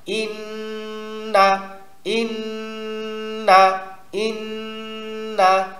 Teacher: নুনে তাসদিদ পাইলে নুনের উচ্চারণে ধরে রাখতে হবে এক থেকে দুই সেকেন্ড